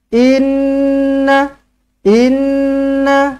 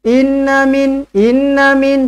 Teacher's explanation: Nun sabdu wajibul gunna dengungkan dua harakat Inna Inna Jangan kurang daripada dua harakat in inin tak cukup